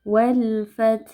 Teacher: Alif lamnya kita baca jelas. Kemudian ada ta sukun, kita baca dengan sedikit menghembuskan nafas dan ada huruf ha sukun.